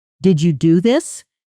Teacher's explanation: Stress on do. This implies surprise about the action itself regardless of who did it.